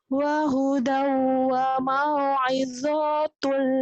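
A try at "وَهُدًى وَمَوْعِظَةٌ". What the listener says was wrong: Pendek.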